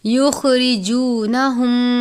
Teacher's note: ہا گول والی ہا ہے یعنی سینے کے بیچ سے یا حلق کے آخر سے ادا کرتے ہیں بھاری آواز کے ساتھ، آپ نے اس کو باریک نہیں پڑھنا۔